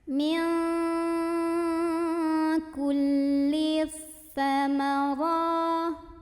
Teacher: Karena alif lamnya ketemu sama huruf syamsiyah yaitu sa, maka alif lam ini tidak perlu dibaca. Jadi cara bacanya diidghamkan atau dimasukkan langsung ke sa. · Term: alif lam syamsiyah